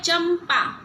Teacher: तो यहाँ पे देखिए यहाँ पे यह अनुस्वार है, यहाँ पे लगा है। अब यह है चंपा, उच्चारण में म आ रहा है और उसको अनुस्वार के रूप में इधर लिखा गया